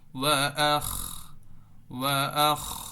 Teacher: আমরা খকে আপার সাউন্ডে আওয়াজটা মোটা করে আমরা খতে ধরবো, তবে আখ যাতে না হয়, আখ ধরে রাখতে হবে।